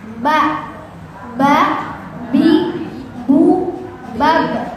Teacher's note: kalau ba adanya di bibir Ba rapat